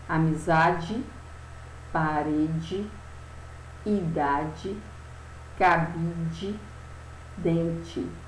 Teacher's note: as palavras do quadro possuem o som de I no final, mas são escritas com a letra E. Elas só têm o som na hora que você pronuncia, mas, na verdade, a escrita delas é com a letra E.